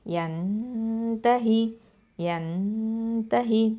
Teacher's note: அடுத்தது யா ஃபத்தா நூன் சுக்குன் என், நூன் சாக்கினாக்கு அடுத்ததான் இப்போ த வந்திருக்குது. இங்கே இஹ்ஃபா பண்ணணும், மறைச்சோ குன்னா செஞ்சு ஓதணும். அப்போ யன்தஹி, யன்தஹி, த ஃபத்தா த, ஹ கஸ்ரா ஹி, யன்தஹி.